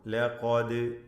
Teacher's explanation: ലഖദ്, ദാലിൻ്റെ സുക്കൂൻ ഖൽഖല നൽകി ശബ്ദം ചലിപ്പിച്ച് വ്യക്തമാക്കണം. ലഖദ്.